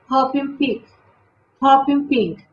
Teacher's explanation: esa O es una O así como abierta